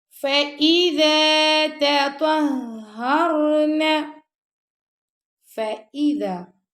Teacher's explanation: کرنا ہم نے، یطہرن، فَإِذَا تَطَهَّرْنَ، فَإِذَا، اب آپ پڑھیں فَإِذَا، تو اے نہیں پڑھنا آپ نے، ای پڑھنا ہے